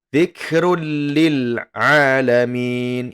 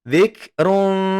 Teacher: nun sukun atau tanwin ya bertemu dengan ra dan la, maka dia nanti tidak didengungkan